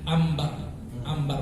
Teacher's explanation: Ketika nun sukun bertemu dengan ba, maka langsung bunyi nun sukun itu berubah menjadi mim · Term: iklab